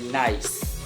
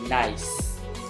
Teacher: The consonant N is alveolar, occurs when the tongue approaches the area of the palate located behind the front upper teeth.